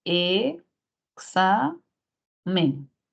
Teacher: y tampoco va en men porque si no sería examen entonces la mayor fuerza de voz va aquí exa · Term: palabra grave